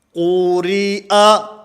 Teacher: اس میں قاف کو موٹا پڑھنا ہے، اور اس کے بعد جب را کا نام لیں گے، را کا نام لیتے ہوئے اس کو پر پڑھنا ہے، زیری۔ جب اس کے نیچے کسرہ پڑھیں گے، زیر پڑھیں گے، تو پھر اس را کو باریک کر دیں گے، کیونکہ را کا قاعدہ یہ ہے کہ اگر یہ متحرک ہو اپنی حرکت کے تابع ہوتی ہے۔